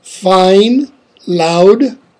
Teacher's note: Centralized first element in diphthongs of fine, loud